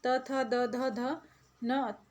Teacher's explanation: त और श, त वर्ग के सारे त थ द ध ध न तक के जो वर्ण हैं, और जो श है, इनको बोलने में हमें दांत का उपयोग करना रहता है